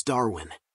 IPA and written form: ˈdɑːrwɪn (Darwin)